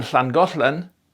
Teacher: you open the sides of your tongue so that the air flows over it and you get this hl sound. And that hl is what you get in Welsh as the double L, as in Llangollen.